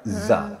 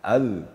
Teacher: kalau zal dipertemukan ujung lidah dengan ujung gigi, hanya sekadar bersentuhan, maka bunyinya akan terasa lembut.